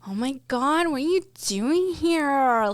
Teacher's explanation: vocal fry, that like creak in your voice